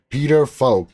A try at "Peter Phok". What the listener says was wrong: I should correct you. It's Poke actually. It's a silent H. Poke. It's commonly mispronounced, but it's all good.